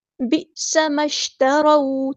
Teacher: را ہمارا heavy letter, یہاں پہ زبر آ گئی ہے، فتح آ گئی ہے، تو یہ ہمارا بن گیا ہیوی لیٹر